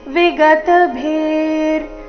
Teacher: ವಿಸರ್ಗದ ಉಚ್ಚಾರಣೆ ಅರ್ಧ ರ ರೀತಿ